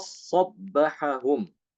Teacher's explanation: Dalnya hilang, ya. Diidghamkan ke dalam huruf shad.